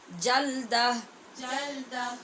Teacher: جلدہ نہیں، آواز کھولیں، زبر کی آواز کھول کے پڑھیں.